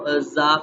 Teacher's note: زا کو پڑھتے وقت اوپر والے دانت نیچے والے دانتوں سے تھوڑا آگے کی جانب کو آتے ہیں اور اس کو ہم باریک نرمی سے پڑھتے ہیں